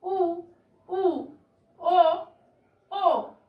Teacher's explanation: वृत्ताकार स्वरों को बोलते समय हमारे जो होठों का आकार है वो थोड़ा सा गोल हो जाता है, इसलिए इन्हें वृत्ताकार स्वर कहा गया है।